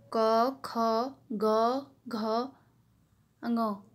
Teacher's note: तो इनमें जो क वर्ग है तो ये जो है जीभ के जो है पश्च भाग से जो है कंठ को स्पर्श करके बोले जाते हैं